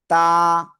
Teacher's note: জিহ্বার আগা সামনের উপরে দুই দাঁতের গোড়ায় লাগবে, লাগিয়ে আমরা এক আলিফ টানিয়ে উচ্চারণ করব। তা, শুরুতে আসলে এমন, মাঝখানে আসলে এমন, শেষে আসলে এমন, ঠিক আছে।